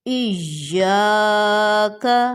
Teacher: نماز میں بھی یہ لفظ ہم پڑھتے ہیں، اس کو اکثر ایاک پڑھا جا رہا ہوتا ہے، یا پر زور دینا ہے شد کی وجہ سے